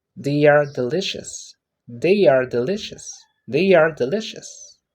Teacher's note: when we are answering the pitch get lower at the end